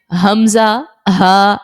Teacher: हमजा हा जो है वो हलक की सबसे जो नीचे वाला हिस्सा है अकसा ए हलक जिसको बोलते हैं वहां से यह दोनों हुरूफ अदा होते हैं